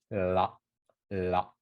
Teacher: You kind of have to like flick your tongue like la, la. So your tongue, the tip of your tongue touches the back teeth, the top back teeth, and then you flick your tongue down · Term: R sound